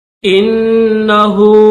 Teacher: بسم اللہ الرحمن الرحیم۔ انہو، حمزہ کو نون کے ساتھ ملائیں گے، نون کے اوپر تشدید اور غنہ بھی کریں گے